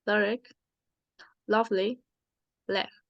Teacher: The next are the lateral consonants. The first is the L, which is lateral, palatal, and voiced. For the spelling L, we have lyric, lovely, leg.